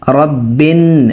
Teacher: নুনে অবশ্যই ওয়াজিব গুন্না হবে